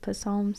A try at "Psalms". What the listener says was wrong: No, it's Psalms. It's Psalms. Psalms. It's not puh.